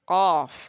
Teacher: Yang pangkal lidah dengan menaikkan lidah kita di bagian pangkal dalam itu kena dengan langit-langit. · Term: huruf qaf